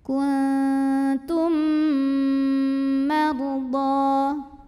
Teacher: mim pertama lebur ke mim kedua masuk kuntum sambil didengungkan, tahan bunyi M-nya. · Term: idgham mimi